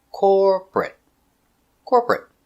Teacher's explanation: Stress on the first syllable.